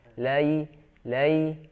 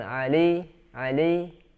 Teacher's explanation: antara Fatah dengan ya ketemu Ya Sukun harus smooth atau halus